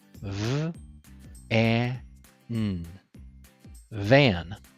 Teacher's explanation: Let the air flow out through your mouth while your lower lip touches your upper teeth. Your voice is on, so you should feel vibration in your throat. Now you try to say the V sound. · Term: voiced V sound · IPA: /v/